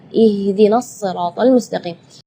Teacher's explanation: Ya, itu tidak boleh, itu keluarnya dari dada. Sedangkan makhraj huruf H itu adalah dari tenggorokan. Jadi keluarnya tipis karena H itu termasuk huruf di antara 28 huruf hijaiyah Indonesia yang paling lemah adalah huruf H.